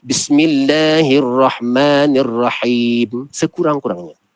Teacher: Him itu maka silap kita berlaku, iaitu kita tidak panjangkan him. Rahim patutnya 2 harakat, sekurang-kurang 2 harakat.